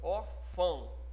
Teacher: O O quase que some. Ele tem quase a pronúncia de U. É como se fosse um semi-O. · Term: semivogal